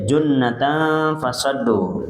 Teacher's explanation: Junnya ini gunah tiga harakat.